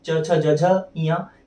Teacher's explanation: तालव्य में क्या होता है, एक जीभ है, जीभ का जो मध्य भाग है मैं दिखा रहा हूँ, ये भाग आपके ऊपर के तालू, जो ऊपर का तलवा है मुंह के अंदर का, उससे टकराता है। बोलते उच्चारण के समय आपके जीभ का मध्य भाग आपके ऊपर के तालू से टकराता है। च छ ज झ इया, इन्हें कहा जाता है तालव्य व्यंजन।